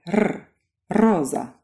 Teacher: your tongue goes right up against your alveolar Ridge it softens a bit to allow air to come through and as air comes through it vibrates your tongue up and down against that Ridge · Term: trilled R